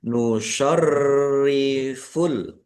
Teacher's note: Rnya dibaca dobel ada tasdidnya ditekan dan ditahan biar tampak dobelnya.